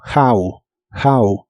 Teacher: la H se pronuncia como una J suave de español y la o se pronuncia como una a